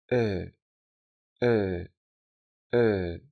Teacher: Y si todavía no te has dado de cuenta, se reproduce como el sonido de la letra E del español, pero más abierta, es decir, como si dijeras la E, pero dejando la boca un poco más abierta y la lengua ligeramente más baja. Para ayudarte a pronunciarla, puedes pensar en reproducir el sonido en español resultante de la combinación de la letra E con la letra H.